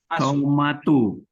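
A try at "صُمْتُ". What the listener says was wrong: Nah, bukan somatu tapi bacanya sumtu. Nah, jadi panjangnya apa alifnya itu hilang jadi sumtu. Soma jadi sumtu.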